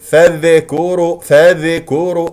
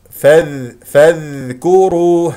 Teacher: كما ذكرت قبل قليل لا تقل فاذكر فاذكر هذه قلقله لذال اعطي الذال رخاوه يجري فيها الصوت ولا يجري فيها النفس